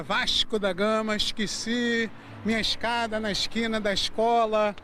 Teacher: Esse S meio misturado com X, trocando o E pelo I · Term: chiado carioca